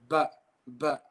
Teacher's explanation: So the letter ba, it is pronounced by joining the inner wet parts